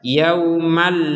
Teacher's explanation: dimasukkan tanpa dengung itu yang betul · Cuman karena bertemu dengan huruf lam dan kita menyambungnya, maka tanwinnya ini sudah tidak dibaca dengan an, tapi langsung dimasukkan ke huruf lam sehingga terbaca yaumalla. malla, dan jangan ada dengung.